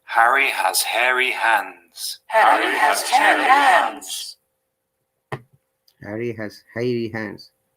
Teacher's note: you're going to pronounce h imagine you're steaming up a mirror it's a voiceless fricative in the throat it isn't made in the mouth or on the lips